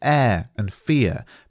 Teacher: Both have the same consonant sound at the end, the ‘r’ sound, but the vowel sounds are ‘eh’ and ‘ea’. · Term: half rhyme